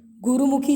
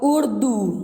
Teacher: अब जैसे छोटू की मात्रा होगी गुरुमुखी, छोटी ऊ की मात्रा हमने फटाफट से बोल दिया। अब उर्दू, तो हमने थोड़ा टाइम लगाया प्रोनाउंस करने में, तो वो बड़े ऊ की मात्रा कहलाई।